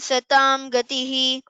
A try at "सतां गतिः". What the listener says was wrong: Satam gatihi, it becomes satang gatihi. Kakagaganga. Satang gatihi. Yajna ijjo mahejyascha kratus satran satang gatihi.